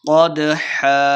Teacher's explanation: قدحا، قاف کو موٹا پڑھنا ہے، دال ساکن ہے اور رفع قلقلہ سے خوب واضح کرنا ہے۔